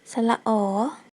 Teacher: 發音時舌身降低並後縮，口腔肌肉鬆弛，雙唇收圓，口型稍微張大，氣流通過而成音。